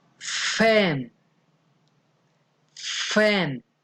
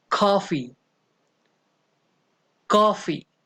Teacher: lower lip comes into contact with the upper teeth